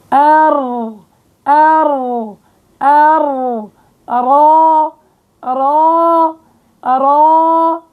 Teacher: وقت بتقعر وسط اللسان بضيق المخرج عند الحلق، فبصير آلية التفخيم